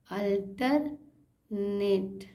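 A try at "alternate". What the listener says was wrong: सही, बहुत सही पढ़ा।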